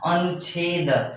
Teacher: विसर्ग के बाद छ आ रहा है, तो ये जो विसर्ग है वो आधे च में कन्वर्ट हो जा रहा है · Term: आधा च का आगम